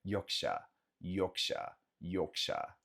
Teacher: esse R no final no inglês britânico eles não pronunciam